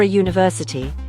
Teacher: university starts with a Y consonant sound